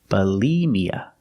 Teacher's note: Second syllable, use the long e like green beans, bulimia. Put the stress on the second syllable